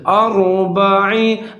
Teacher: را ساکن ہے، اب را ساکن سے پہلے حرف دیکھیں گے، اس کے اوپر زبر ہے تو را کو ہم موٹا کر کے پڑھیں گے